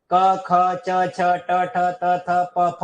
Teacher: स्वर तंत्रियों में बिना किसी कंपन के हवा मुख विवर से सीधी बाहर निकल जाती है। · क, ख, च, छ, ट, ठ, त, थ, प, फ और श, श, श, श इनमें कोई गुंजन या कंपन नहीं होता। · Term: अघोष